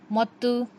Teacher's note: ज़ुबान की नोक को सामने के दो दांतों की जड़ में लगाने से तो अदा होता है।